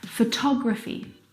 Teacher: Now, if you look at the second example, photography, you can hear the pronunciation is different, and that's because the second syllable is the stressed syllable in this word